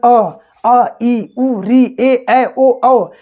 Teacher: थोड़ा सा भी कहीं पर जो है प्रेशर नाक पे आपके नहीं पड़ेगा। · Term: स्वर